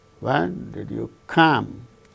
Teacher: When did you come? Here, come is the word that gains the falling tone.